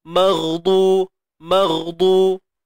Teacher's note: ghain mati, itulah bunyi dia yang tebal pada ghain